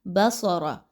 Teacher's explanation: سین کی طرح آواز نہیں آنی چاہیے بلکہ خوب موٹا کر کے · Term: صاد